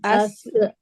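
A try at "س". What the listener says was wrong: अस softly. जबान आपकी टकरा रही है कहाँ पर? जबान की नोक। नहीं, तालू तालू पे नहीं लगाना है। आगे के जो दो दांत है ना, उनकी जड़ पे, उनकी जड़ पे। अस, आगे के आगे के दोनों दांत से टच करें आप, चलें आगे के दोनों दांतों के किनारे से टच करें। अस अस अस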